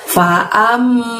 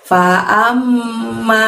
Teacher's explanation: ada mim tasydid di sana, amnya ditahan 2 harokat